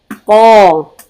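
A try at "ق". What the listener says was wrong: Lagi. Dibuka lagi mulutnya.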